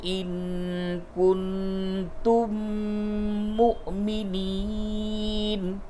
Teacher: نون ساکن کے بعد کاف ہے، اخفا ہوگا